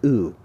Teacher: You can also think of it as being a rounded vowel. Your lips are kind of forming an O